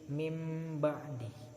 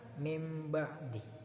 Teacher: nun mati bertemu dengan ba tapi berbunyinya mim, itu nama iklab, mim ba'di.